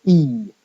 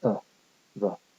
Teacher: if you stress it you get e and if you don't stress it you get uh the